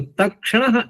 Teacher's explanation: शकार भी मूर्धा से और णकार भी मूर्धा से तो तक्षण बोलने में सरलता हो गई